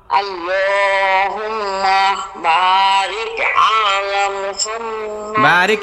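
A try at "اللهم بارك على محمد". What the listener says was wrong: বারিক আয়ের মধ্যে টান পড়ছে, এই শোনেন, বারিক আয়ের মধ্যে টান নাই। ওয়া আলা, আপনার এই আলার মধ্যে আইনের মধ্যে টান পড়ে, এর আগে ওই ভুলটা হয়েছে। আলা আলা আলা পড়েন 10 বার, পড়েন 10 বার, মাইক্রোফোন অফ করে 10 বার পড়েন।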